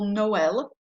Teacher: you're going to pronounce the second vowel separately from the first when you have two vowels. So otherwise, if that wasn't here, we might say Noël or something because the O and the E would be together.